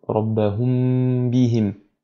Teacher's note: l'ikhfa al-shafawi nécessite un nasillement supplémentaire en fait